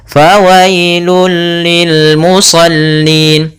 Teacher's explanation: Maaf, idgham kamil. Idgham secara keseluruhan, masuk secara keseluruhan dan hilang suara hurufnya, langsung ke lam saja.